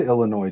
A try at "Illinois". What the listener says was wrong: No, you got to pronounce the S. It's Illinois.